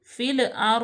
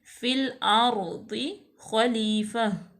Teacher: لام کو جما کے ٹھہراؤ یہاں پہ پیدا کریں گے